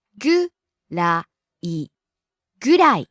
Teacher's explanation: Falls on the second syllable ra.